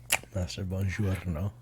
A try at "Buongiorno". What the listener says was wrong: Yeah, well, no, it's a J, not a G. Buongiorno. Yeah, there's no G. There's nothing in the back of the throat. It's just buongiorno.